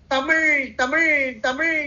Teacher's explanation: அந்த ழ வரும்போது அந்த நுனி நாக்க கொண்டு வந்து மேல் அன்னத்தோடு பொருத்துதல் ழ நம்முடைய தமிழுக்கே உரிய சிறப்பு லகரம் இந்த பாடல்ல அந்த லகரத்தை தான் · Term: ழகரம்